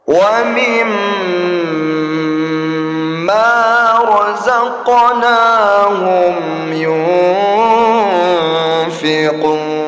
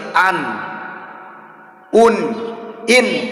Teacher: lazimnya adalah lidah kita menempel pada bagian langit-langit atas ya tetapi kalau dalam ee hukum bacaan ikhfa nun mati itu dibaca lidah kita mengambang antara langit-langit dengan di bawah bagian lidah kita gak boleh menyentuh bagian bawah tu y gitu